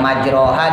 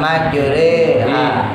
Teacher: imalah dulu kalau kita pernah belajar, yang majroha dibaca majreha